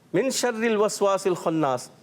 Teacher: من میں اخفاء کا غنہ کریں گے نون ساکن کے بعد کیا آ رہا ہے شین تو اخفاء کا غنہ ہوگا